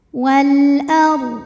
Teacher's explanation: Sebab alif lam menghadapi huruf qamariah yaitu hamzah. Maka lam sukun ini kita bunyikan dengan jelas. Wal ar huruf ro dibunyikan secara tafkhim. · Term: alif lam qamariah